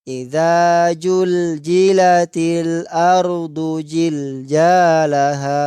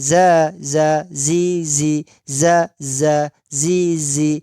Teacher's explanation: Jadi ada bunyi yang keluar suara ya, sehingga zai itu tegas bunyinya, bukan lembek.